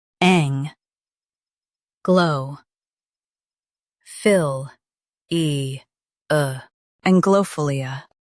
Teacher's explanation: Stress ang and keep philia smooth.